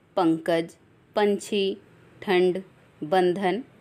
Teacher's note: अगला है अनुस्वार। इसके उच्चारण में हवा नाक से निकलती है। अनुस्वार का अर्थ है स्वर के बाद आने वाली नासिक्य ध्वनि।